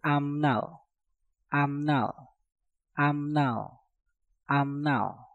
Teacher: Ap berakhiran dengan piup, setelah itu diikuti kata nal yang diawali dengan nieun, maka piupnya kita rubah menjadi suara mieum.